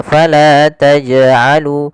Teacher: Qalqalah artinya memantul. Maka jangan kita baca dengan bacaan taj'alu yang artinya dia tidak mantul. Maka harusnya jim harus mantul.